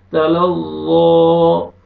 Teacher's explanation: ذا کو موٹا کر کے پڑھیں گے تاکہ ذال میں آواز مکس نہ ہو